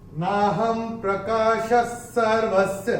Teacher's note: पहले चरण में ह के ऊपर अनुस्वार के बाद का अक्षर है प, और अनुस्वार के बाद जब प आएगा तो अनुस्वार का उच्चारण होगा म।